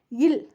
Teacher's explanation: நாக்கின் நுனி மேல்நோக்கி வளைந்து அன்னத்தை தடவ லகரம் பிறக்கும் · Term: சிறப்பு லகரம்